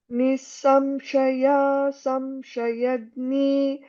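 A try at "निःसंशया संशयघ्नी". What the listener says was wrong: Nisamshaya Samshayagni. Gha is a Mahaprana. Gha. Can you say gha? So it's a Mahaprana. Nisamshaya Samshayagni. So you can put little more stress for Gha.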